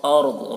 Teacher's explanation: را کو پر پڑھیں گے کیونکہ راہ ساکنہ سے پہلے زبر ہے